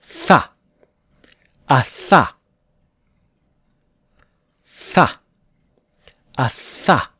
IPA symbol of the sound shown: θ